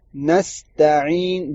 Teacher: نون کے آگے سین ہے، سین کی آواز نکالنی ہے. تا اور عین، تا کو پتلا کرنا ہے، عین کی آواز وسط الحلق سے نکلے گی